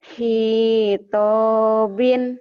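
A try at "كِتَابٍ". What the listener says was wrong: Hitabin. Tonya panjang.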